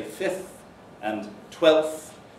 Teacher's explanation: Forms of numerals don't elide th, but they may elide the preceding consonant.